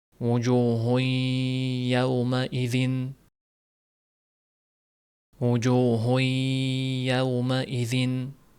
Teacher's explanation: Bu yerda ikki harakat ushlab turiladi g'unna bilan.